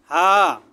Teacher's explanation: এটা সাধারণভাবে হলকের শুরু থেকে উচ্চারণ করবেন সাধারণভাবে হা